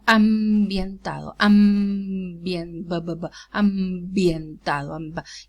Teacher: it's realized as an occlusive because it's preceded by a nasal